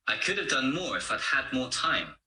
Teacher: like i'd is really just a weak form which is written so could have is pronounced could've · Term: weak forms